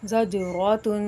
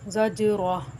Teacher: عبرہ زجرات جیم پہ قلقلہ کرنا ہے، را پر پڑھنا ہے، تا کے اوپر حرکت تنوین ہے، اس کو غنہ کر کے پڑھیں گے اور وقف کی صورت میں گول تا ہا ساکنہ سے بدل جائے گی